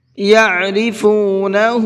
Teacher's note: عین کو حلق سے نکالیں گے اور ہا کو کھینچ کر کے پڑھیں گے